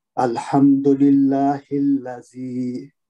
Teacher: الحمد للہ الذی، اس پہ الحمد پہ میم ساکن ہے، اس پہ میم کا ہزارے شفی ہوگا یہاں پہ. للہ میں لام میں جلالہ باریک پڑھا جائے گا کہ زیر ہے، زیر سے شروع ہو رہا ہے. ہلا زی میں لام مشدد ہے تو اس کو تحقیق سے پڑھیں گے.